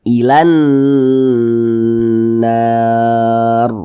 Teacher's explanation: huruf ro sukunnya dibaca tabkhim, dibaca tebal. Sehingga ketika kita mengucapkannya itu, pangkal lisan kita itu naik terangkat ke atas, ro-nya itu kita tebalkan. Ilan nar, nah, ditebalkan huruf ro-nya.